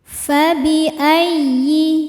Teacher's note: Jangan hilang bunyi dengungannya. Fabi ayyi, ya tasydid dibaca dengan nabar, yaitu menaikkan intonasi suara ya. Jadi jangan ditahan, bukan ayyi tapi ayyi.